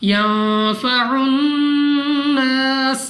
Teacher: सीन को सीटी वाली आवाज के साथ पढ़ना है।